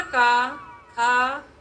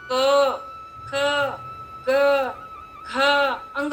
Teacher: अ निकलना चाहिए, आ नहीं, का नहीं